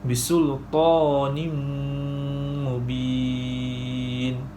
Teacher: Tanwin bertemu dengan huruf mim dan cara bacaannya ialah memasukkan tanwin ke dalam huruf mim beserta dengung 2 harakat.